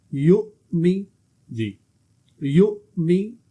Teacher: یا حمزہ پیش یو، میم زیر می، یو می، جھٹکا دے کے پڑھیں یا کو، یا کے ساتھ حمزہ ہے تو یا کو جھٹکا دیں گے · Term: حمزہ ساکن